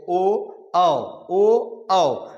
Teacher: जो ओ और औ है वो ओष्ठ और कंठ दोनों से बोले जाएंगे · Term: कंठ होष